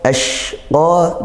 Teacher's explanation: Shin ini ketika kita menaikkan pangkal lidah kita, dia akan tafashi, punya sifat tafashi juga. Di situ hamas didesiskan dan juga tafashi, tersebar udaranya. Karena ketika kita naikkan pangkal lidah, maka dia akan menyebar dari samping-sampingnya, desisannya itu.